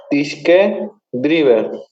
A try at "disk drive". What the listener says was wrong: Disk drive, no drive. Cuando lleva E final, entonces es driver, pero aquí es drive nomás. Las E final en inglés no se leen, ¿ya? Entonces ahí se lee drive, ¿sí? Todo lo que tiene E final no se lee. En inglés no se lee ninguna.